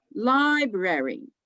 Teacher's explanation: You see, lie is louder. Brary is softer. Goes together more quickly.